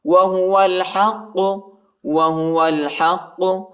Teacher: ہا کو قاف کے ساتھ ملائیں گے اور قاف کو موٹا بھی پڑھیں گے اور جھٹکا بھی دیں گے، یعنی حروف قلقلہ کا حرف ہے.